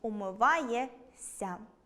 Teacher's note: Тут також маємо уподібнення за місцем і способом творення. Збіг приголосних -шся- вимовляємо як [с′:а], тому – [умива́йес′:а].